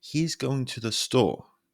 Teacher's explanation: the pitch falls on store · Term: downward inflection